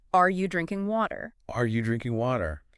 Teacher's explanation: Here we tend to stress drinking and water like what's happening and what is the drink?